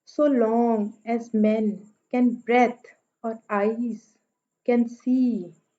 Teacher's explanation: so पे stress नहीं है, पहला सिलेबल स्ट्रेस नहीं है